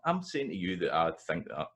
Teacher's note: So the note of their voice goes up and down in kind of Glasgow speech.